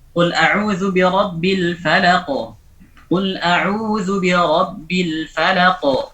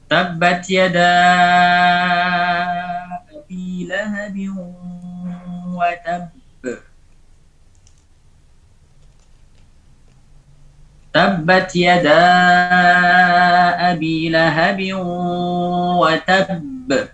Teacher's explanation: al-qalqalah al-kubra 'inda al-waqfi 'ala al-harf al-muqalqal, ketika waqaf pada huruf yang diqalqalahkan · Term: qalqalah kubra